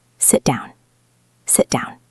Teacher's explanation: So we stop the T and move directly into the D of down. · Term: stopped T